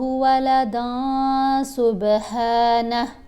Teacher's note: نون کی آواز کو ناک میں چھپا کر پڑھنا ہے اور ایک حرکت کے برابر ٹھہر کر بھی پڑھنا ہے۔ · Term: احفا